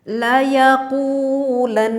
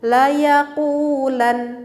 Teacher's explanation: dengungnya itu tetap harus ada, meskipun membacanya kita diberhentikan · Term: ghunnah musyaddad